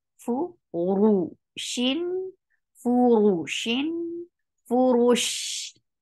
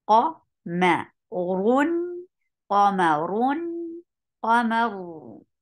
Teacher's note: You are lifting your tongue, your root of your tongue towards your palate to make ra heavy.